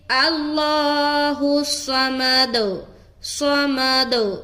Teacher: صوت کو موٹا ادا کرنا ہے، سیٹی کی بھی آواز آئے گی لیکن حرف موٹا ادا ہوگا، یعنی کہ سیٹی والی صفت جو ہے نا کم معلوم ہوگی